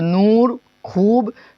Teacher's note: वाव मारूफ जो वाव खींचकर पढ़ा जाए